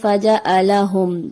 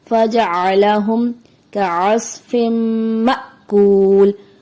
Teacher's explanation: عین کی جگہ حمزہ بنا دیا جاتا ہے جیسے فجعلہم، جو کہ درست نہیں ہے، درست فجعلہم کعصف مأکول۔